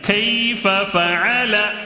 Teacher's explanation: یا ساکن سے پہلے زبر ہے تو یائے لین یعنی جلدی پڑھنا ہے